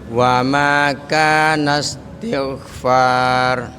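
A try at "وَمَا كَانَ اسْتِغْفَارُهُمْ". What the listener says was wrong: Baik. Rohnya tebelin Pak. Far.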